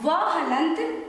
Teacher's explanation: अर्थात व हलंत का उच्चारण स्थान दांत यानी दंत और ओष्ठ है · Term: दंतोष्ठ